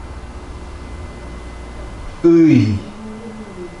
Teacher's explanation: Ö unlisiga I unlisini qo'shish orqali Öy diftong kelib chiqyapti